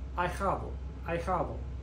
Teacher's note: the H is silent, so the A and the I together form a diphthong, two vowels forming one sound, and it sounds like I.